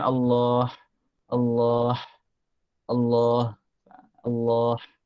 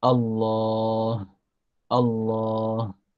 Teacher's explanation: Allah bila diwakafkan Allah, maka tariknya ke bahagian bawah kerana di hujung kerongkong. Bukan Allah, Allah, Allah, Allah. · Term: huruf ha bulat